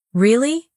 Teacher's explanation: when someone says, Really? with a rising tone, they're probably surprised.